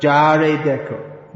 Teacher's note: Ya becomes ja, but not in all cases.